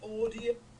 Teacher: he's making a sort of percussive D sound because he's saying audio, so the mouth's a lot more tightened and sort of closed